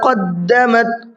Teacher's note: قاف کو منہ بھر کے پڑھنا ہے